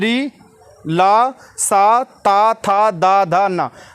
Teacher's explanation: इनका उच्चारण स्थान जो है वो दंत है